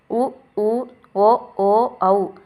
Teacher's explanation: உதடை வந்து குவிக்கிறதால பிறக்குது